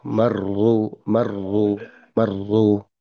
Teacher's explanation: ujung lidah itu bertemu dengan gigi seri belakang. Gigi seri atas yang belakang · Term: bergetar